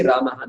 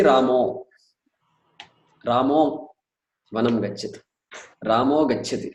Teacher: Visarga drops, Akara becomes O.